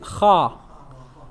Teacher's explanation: letter ha it's not the tip of the tongue said ha what is being raised the back of your tongue is being raised